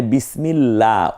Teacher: আল্লাহ শব্দের লামটাকে পাতলা করে পড়তেছি